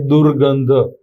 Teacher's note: વિસર્ગ છે એનો લોપ થશે અને એની જગ્યાએ ર નું ઉચ્ચારણ થશે